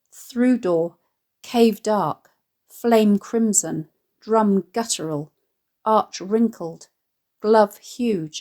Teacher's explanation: a rhythm which is heavy on adjacent stressed syllables